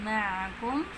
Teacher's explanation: عین کو گلے کے درمیان سے ادا کریں گے یعنی وسط الحلق سے